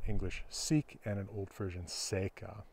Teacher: English and Frisian share the unrounding of the I-mutation product of long O.